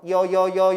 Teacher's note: 이중 모음은 앞에 모음 하나 까딱까딱 하나 넣어 이로 시작해서 어로 끝나는 거라고